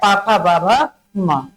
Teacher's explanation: पा वर्ग की बात करते हैं। पा वर्ग। कहां से उच्चारण होगा? ओष्ठ से होगा।